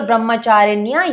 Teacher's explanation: the tongue tip has to touch upper palate when you say pronounce the letter Ni. N is in a capital letter.